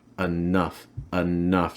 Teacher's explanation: for enough, it has that reduced E at the start.